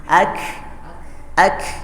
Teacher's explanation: ketika disukunkan terdengar jelas bahwa dia memang ada hambusan nafasnya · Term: Hames